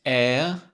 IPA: ɛər